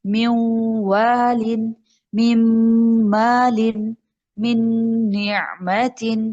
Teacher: نون کو آگے واو میں مرج کرنا ہے، واو کی ساؤنڈ آئے گی، نون کی ساؤنڈ ناک میں چلی جائے گی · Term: غنہ